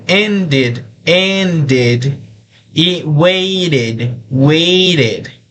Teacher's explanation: debemos pronunciar la E como una I para que se note la pronunciación al final